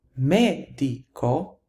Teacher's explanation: the stress falls on the third to the last syllable, and therefore the plural is going to be medici.